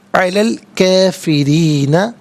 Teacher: را کے نیچے زیر را کو باریک کر کے پڑھیں گے